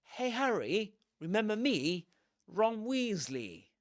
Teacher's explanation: Weasly without long e sound in British English